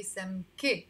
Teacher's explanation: in lebanese arabic we say some k with the e sound